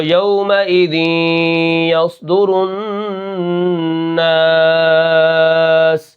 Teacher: اس کو ہم 4 الف 5 الف کھینچ کر پڑھتے ہیں، ٹھیک ہے؟ تو یومئذ یصدر الناس، آخر میں جو مد ہو رہی ہے اس کو مد عارض وقفی کہتے ہیں۔